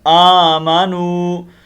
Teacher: ان الذین آمنوا، کھڑی زبر ہے، اس کو ایک الف کے مطابق ہم لمبا کریں گے. آمنوا، یہ واو مدہ ہے. ٹھیک ہے. اس کو ہم ایک الف کے مطابق لمبا کریں گے. آمنوا، حمزہ کھڑی زبر آ، میم زبر ما، آما نون پیش واو نو، آمنوا.